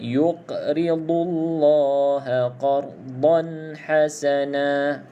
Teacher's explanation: pastikan bila sebut huruf dot, bahagian sisi lidah kena pada gigi garham. Gigi garham, gigi belakang tu bahagian atas.